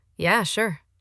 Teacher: But it was flat, almost no rise, very clipped at the end. Clipped means short and cut off.